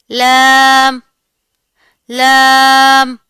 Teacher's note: जुबान की नोक और जुबान की करवट का आधा हिस्सा जब ऊपर के दांतों के मसूड़ों से लगेगा तो लाम अदा होगा।